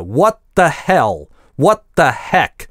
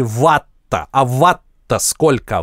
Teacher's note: Нет, стоп версия TH это именно русское /t/, спинкой языка, именно как вы произносите в сочетании ватт-то сколько.